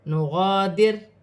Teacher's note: را ساکن سے پہلے زیر ہے تو را باریک پڑی جائے گی